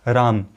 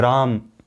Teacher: जो हम म में स्थित अ है उसमें केवल हम ह्रस्व का उपयोग कर रहे हैं, यानी कि सबसे न्यूनतम समय का उपयोग हम उसमें कर रहे हैं। परंतु वही जो र में स्थित आ है, रा है, उसमें जो आ है उसके लिए हम क्या है, अ से 2 गुना समय का उपयोग कर रहे हैं